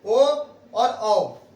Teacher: कंठ और ओष्ठ से बोला जाता है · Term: कंठोस्थ वर्ण